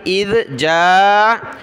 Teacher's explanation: ذال پر زبان نکالی